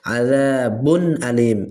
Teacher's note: এই যে তানবিন আসছে, তারপরেই হামজা আসছে, হরফে হালকির হরফ, এই জন্য এই বাতে গুন্না করা যাবে না, অর্থাৎ এই বায়ের উপরে যে তানবিন আছে এই তানবিনে গুন্না করা যাবে না। আযাবুন আলিম এভাবে স্পষ্ট করে পড়তে হবে, কখনোই আযাবুন আলিম এইভাবে পড়া যাবে না।